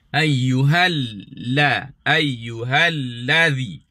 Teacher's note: Perkataan alladzi jangan sepak lam kena bunyi penuh. Jangan bunyi alladzi.